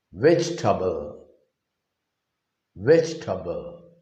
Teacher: native speakers just leave out or drop that E vowel sound in the middle and simply they reduce it as a disyllabic word